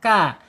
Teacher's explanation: Ka ya, makhrajnya ada di al-lisan yaitu ujung lidah menyentuh langit-langit yang berdaging, ka. Kemudian secara sifat al-hamas ketika dia sukun ak ya, alirkan napas kita.